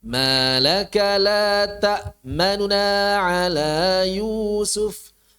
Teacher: Yang diikhtilas hanya nunnya saja.